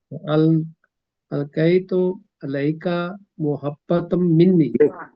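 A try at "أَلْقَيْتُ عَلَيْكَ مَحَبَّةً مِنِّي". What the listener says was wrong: محبتم منی. میم پہ زبر پڑے نا.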